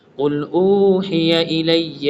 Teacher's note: قاف کو موٹا پڑھنا اور حا بریک والی ہے